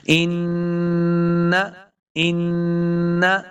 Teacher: انما ان، دیکھیں نون مشدد ہے، جب بھی نون کے اوپر شد آ جائے گی تو نون مشدد ہوگا، تو ہم نے اس کو غنہ کے ساتھ پڑھنا ہے۔ غنہ اپنی آواز کو ناک میں لے کے جانا، اس کو غنہ کہتے ہیں۔ دیکھیے ان، ان، اس کو غنہ کہتے ہیں، تو ہم نے غنہ کر کے پڑھنا ہے۔